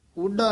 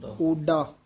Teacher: ਊਡਾ ਨਹੀਂ ਕਹਿਣਾ ਓਡਾ ਡਡੇ ਨਾਲ ਬੋਲਣਾ